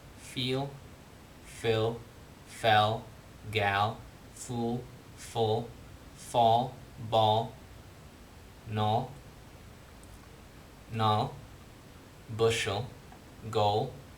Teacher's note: The tip's touching the alveolar ridge, but the back of the tongue is like raised. It's bunched up, and it's approaching the velum, right? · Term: dark L